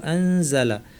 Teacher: জায়ের মাখরাজে জিব্বা নিয়ে যাব, নিচের পাট দাঁতের গোড়ায় জিব্বার কাছাকাছি নিয়ে নাক থেকে গুন্না করবো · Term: ইখফা